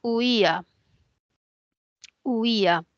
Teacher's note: Esta es una palabra que tiene un diptongo entre la U y la I, homogéneo, y tiene un hiato entre la I y la A. Y ese hiato es un hiato acentual porque hay una cerrada, una abierta y la cerrada tiene la mayor fuerza de voz. Entonces coloco la tilde en la I.